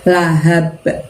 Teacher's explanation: Bukan lahabin lagi tapi jadi lahab karena ba sukun itu bacaan qalqalah, maka harus dimantulkan. Mantulnya seperti mengucapkan ba fathah.